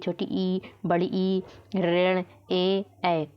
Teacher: ऋण ए ऐ तो ये हमारे क्या कहलाएंगे अग्र स्वर कहलाएंगे ये सब आगे से जो भी हमारी टंग है उसके आगे से बोले जाते हैं